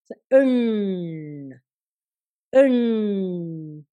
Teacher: இந்த 3 சுழி எண்ணுக்கு நீங்க நாக்க திரும்ப வளைச்சு மேல் நோக்கி சொல்ல வேணும். எண், எண். இங்க இந்த நுனி நாக்கு முன்னுக்கு இல்ல, இங்க பின்னுக்கு மேல இருக்குது.